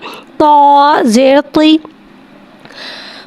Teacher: तो को एक अलिफ यानी 2 हरकत के बराबर खींच के पढ़ेंगे। तो हुर्फ़े मुस्तआलिया है, लिहाजा इसकी आवाज़ हलक से मोटी अदा होगी। तो के नीचे ज़ेर है, ज़ेर को नीचे गिराते हुए अदा करके पढ़ेंगे।